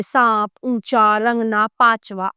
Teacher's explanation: इसका उच्चारण करते समय हवा नाक और मुख से समान दबाव के साथ बाहर निकलती है। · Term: अनुनासिक